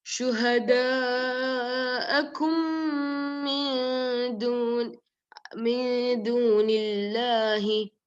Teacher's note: There's a mad there, so you should do 4 to 5 counts. That mad should be done 4 to 5 counts.